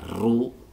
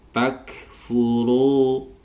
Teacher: panjang dua harakat Mad thi'i domah diikuti wau sukun Lau takfuruuru ini ro tebal karena ada Ro bertemu dengan domah